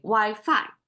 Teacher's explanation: So Wi-Fi have to be the phi, the fallen tone.